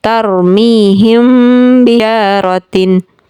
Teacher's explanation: Kemudian contoh ikhfa syafawi, ada mim sukun bertemu dengan huruf ba, maka ini juga disertai dengan dengung.